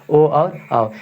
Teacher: कंठ और ओठ से बोला जाता है